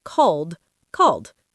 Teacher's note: Regular verb. Call ends in an L sound. Voiced. So the E d ending is the D sound.